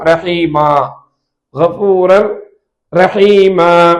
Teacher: இதற்கு பெயர் மத்து, மத்துல் இவத், 2 அலிப்புகள் நீட்டணும். இதை நீட்டமா 2 அலிப்புகளுக்கு அதிகமா நீட்டக்கூடாது. · இந்த தன்வீன் ஃபத்தஹோடு நாம் நிறுத்தினால், கடைசி எழுத்துக்கு 2 ஜபரோடு நிறுத்தினால் கஃபூரர் ரஹீமன் என்று நாம் சொல்லக்கூடாது. மாறாக இந்த தன்வீன் என்னாகும் என்றால் அலிஃபாக மாறிவிடும்.